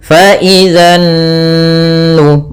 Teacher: Kemudian pada lafal nun sendiri ada bacaan gunnah, yaitu kita tahan suara nunnya sepanjang 2 harokat. Fa idzan nu, baru dilepas.